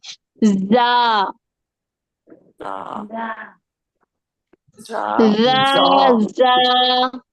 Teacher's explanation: जा के अंदर सीटी होगी, सख्ती होगी